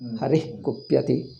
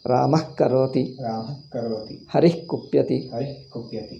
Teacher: The Visarga should be half. Immediately it is taken over by ka. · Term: Ardha Visarga